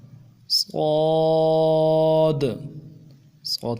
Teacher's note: صاد صاد کی سیٹی موٹی ہوگی